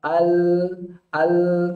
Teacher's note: Kita coba al, ternyata bukan ujung lidah kita, tapi malah agak ke tepi. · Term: sifat inhiraf